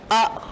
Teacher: एकमात्र अ जीवा के मध्य भाग से बोला जाता है · जिह्वा का मध्य भाग सक्रिय रहता है, मध्य स्वर कहलाते हैं